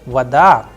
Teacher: But in the word vada, it is rising at the end because the udarenya is on a, not on o. So, vada, and that is why the sound of o is coming like a, and I am pronouncing like vada.